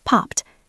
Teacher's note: The ed sounds like a t because pop ends in a voiceless sound. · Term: past tense